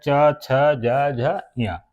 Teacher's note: इनको हम लोग तालव्य व्यंजन कहते हैं तालव्य व्यंजन क्यों कहते हैं क्योंकि ये हमारे तालू से निकलते हैं